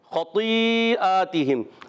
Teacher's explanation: اب خا پر زبر خا عرف مستعلیہ میں سے یہ موٹا بھی پڑھا جائے گا. طا بھی موٹا پڑھیں گے.